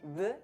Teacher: Como consonante, o sea, como una B aproximante, B, y como vocal, como una U.